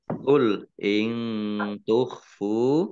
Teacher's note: Qul in tukhfu, nun sukun bertemu dengan huruf ta, bacaan ikhfa dibaca samar-samar.